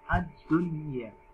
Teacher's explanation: Nun sukun dibaca jelas, ya dibaca jelas.